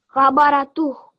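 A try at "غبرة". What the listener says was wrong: Not toh. So this will be, remember this is going to take a sukoon. Ghabarah.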